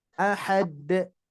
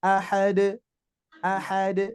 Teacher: Jadi tidak ada tekanan ya tidak ada menekan di awal